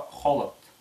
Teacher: «Х» — это глухая задняя щелевая буква «х».